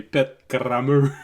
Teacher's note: when you say it in French, you really have to roll the R